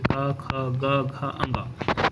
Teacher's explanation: कवर्ग के जितने भी वर्ण हैं वो सभी क्या है? कंठ से बोले जाएंगे।